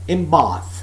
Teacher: The n sound becomes m, in Bath. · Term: assimilation